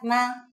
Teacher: Put it at the end of the sentence with a low tone.